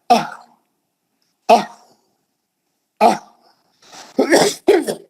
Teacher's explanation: ये दो चश्मी हा ये निचले हलक से निकलती. आप सीने की हवा से झटका मार, आह आह आह तो वो जो हा है वो दो चश्मी हा है, वो जो है यहां से निकलती हो, उसका मखरजी ये निचली हलक है.